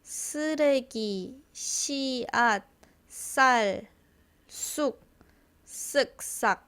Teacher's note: double ssangsiot, it's like s s more angry like shush